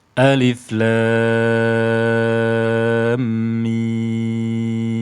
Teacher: Nah, sekarang kita perhatikan di mafatihus suwar pada surat Al-Baqarah ini, alif lam mim. Alif tidak dibaca panjang. Tidak alif, tidak. Ya. Namun lamnya dibaca panjang 6 harakat. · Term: mad lazim harfi mutsaqqal